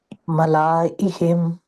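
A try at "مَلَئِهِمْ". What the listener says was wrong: ملا نہیں، الف نہیں پڑھنا، اس کا الف نہیں پڑھا جائے گا۔ ملائہم، ٹھیک ہے، الف ملا کریں گے تو پھر تو الف پڑھ دیا نا ہم نے، پڑھنا ہی نہیں، ملائہم۔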